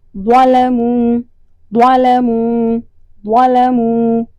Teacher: زبان کی نوک اوپر والے دانتوں سے ٹکراتی ہے اور زبان میں ایک کروٹ پیدا ہوتی ہے، یعنی زبان مڑتی ہے، سائیڈوں سے اوپر کی طرف مڑتی ہے اور درمیان میں ایک اس میں شگاف سا آتا ہے۔